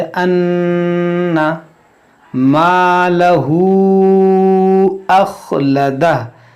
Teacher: यहसबु अन्ना मालहू अखलदह, यहाँ पर आप गौर करें कि नून मुशद्दद है, और जब भी नून मुशद्दद हो या मीम मुशद्दद हो तो उसमें गुन्ना किया जाता है। गुन्ना की मतलब नाक में आवाज़ ले जाएंगे